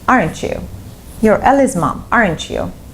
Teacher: if you use falling intonation, aren't you? You're Ellie's mom, aren't you? it means you know the answer, you just need the confirmation